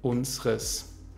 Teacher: Unseres wird zu unseres mit E schwa am Ende